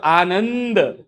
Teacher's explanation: ન ઉપર અનુસ્વાર એ પર તીવ્ર અને એના પછી દ વ્યંજન છે એટલે જોડાક્ષર જેવો થડકો લાગે